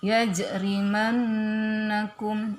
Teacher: ini nun yang bertasdid jadi dibaca gunnah ya.